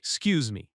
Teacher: The stress falls on Q's in excuse, excuse me. In natural American speech, excuse me often sounds like 'scuse me. It is quick and smooth.